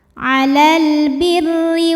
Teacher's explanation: huruf ro dibunyikan secara tarqik sebab barisnya di bawah maka dibacanya tipis